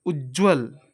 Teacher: ज और ज ये दोनों समान वर्ण है और इनको हम एक ही प्रयत्न में बोल दे रहे हैं। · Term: द्वित्व व्यंजन